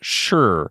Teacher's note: English speakers are much more likely to throw that hard R on the end of sh.